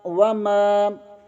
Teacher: میم زبر کے آگے الف مدہ ہے، اسے ایک الف کے برابر کھینچ کر پڑھیں گے